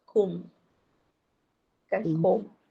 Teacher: dalam bahasa Arab tak ada O, maksudnya sebutan dia dhammah tu dia U lah, kum, kan kum.